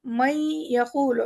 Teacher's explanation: نون کا ایک چھوٹا سا غنہ آئے گا اندر سے